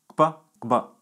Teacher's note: Some other interesting consonants in Yoruba are velar labial stops, kb and kb. They have a double articulation at the lips and at the back of the roof of the mouth